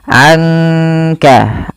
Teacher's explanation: dibaca samar-samar dibaca dengan ada sedikit mendengungkannya. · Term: ikhfa